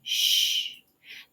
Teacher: your tongue is in the middle of your mouth it's not touching the roof it's not touching the sides it's not touching anything it's just hovering in the middle of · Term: sh sound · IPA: ʃ